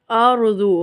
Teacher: را ساکن سے پہلے حرف پر زبر ہے تو را کو ہم پر پڑھیں گے۔ ضاد حروف مستعلیہ ہے، ضاد کو بھی ہم پر پڑھیں گے۔